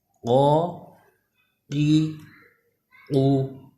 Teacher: زبان کی جڑ اور تالو کے نرم حصے سے، اور اس کو پر پڑھتے ہیں حروف مستعلیہ ہے۔ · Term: قوف